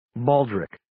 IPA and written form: 'bɔːldrɪk (Baldric)